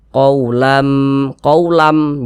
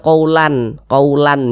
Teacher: Yang dimasukkan itu apanya gitu kan? Yang dimasukkan itu adalah bunyi tanwinnya, kita masukkan ke huruf mim, melebur ke huruf mim. Sehingga ini kita baca qaulam, qaulam, jangan dibaca qaulan, qaulan jangan, tapi dibaca qaulam, menggunakan mim, qaulam. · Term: idgham bi gunnah